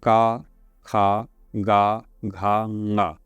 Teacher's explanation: का, खा, गा, घा, ङा कंठ से निकल रहे हैं शब्द।